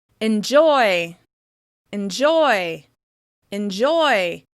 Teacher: Can you hear how the vowel sound of the first syllable en kind of disappears? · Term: reduced